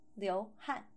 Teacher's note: In the fourth tone, liu han means to sweat.